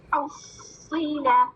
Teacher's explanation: پہلے صاد ساکن, پھر صاد حرکت کے ساتھ, صاد مشدد ہے نا, کیا کر رہی ہوں میں, فو والی ساؤنڈ کو پہلے صاد ساکن سے ملا رہی ہوں, پھر صاد کی کسرہ ادا کر رہی ہوں.